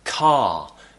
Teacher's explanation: a word like car we don't pronounce the r at the end so vowels replace the letter r a lot and when my